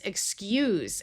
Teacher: When we change it to z, it becomes excuse and it's a verb